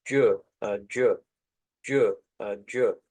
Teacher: encontramos como un africado, es decir, una mezcla de dos consonantes